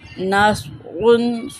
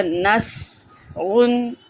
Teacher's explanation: صاد کو پر پڑھیں گے